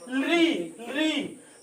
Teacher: हमारी जीभ जब दांत से टकराती है तो इसका उच्चारण स्थान दंत होता है।